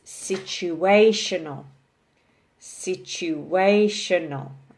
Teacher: here we have five syllables so the emphasis here is on the third syllable